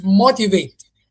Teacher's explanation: The stress falls in the first syllable.